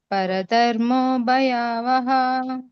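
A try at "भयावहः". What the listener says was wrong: 2 ಇದೆ, ಹಕಾರ ಹೇಳ್ಬೇಕು. ಭಯಾವಹ.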